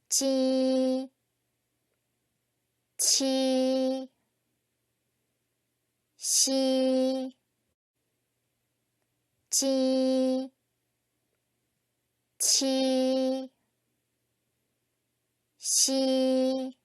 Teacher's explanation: 혀의 앞부분을 입천장 앞쪽에 붙였다 떼거나 가까이 대고 내는 소리이다. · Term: 설면음